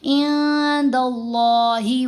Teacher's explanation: دال کے اوپر زبر آئی، اب لفظ اللہ میں لام کو موٹا پڑھنا ہے